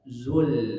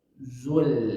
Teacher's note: Lam itu huruf tipis, hati-hati menjadi ikut tebal atau monyong karena dhammah pada sebelumnya.